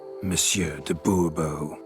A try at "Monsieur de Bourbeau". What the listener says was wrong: The emphasis falls on the last syllable. Bourbeau?